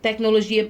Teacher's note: A sílaba tônica é o gi. Tecnologia. E não tec.